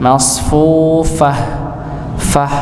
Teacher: huruf fa ini dia tetap ada aliran yang keluar nggih. Masfu ada aliran nggih. · huruf fa ini keluarnya ya, yaitu ketika bibir bagian bawah bertemu dengan ujung gigi seri atas ya, maka muncullah huruf fa. Bibir bagian bawah bagian dalam, bibir bawah bagian dalam ya, bertemu dengan ujung gigi seri atas, bukan bibir bawah ketemu bibir atas, tapi ketemu ya gigi bagian atas nggih.